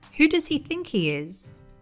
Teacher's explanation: she pronounced the H sound in he. However, in English, it's common to hear people dropping the H sound.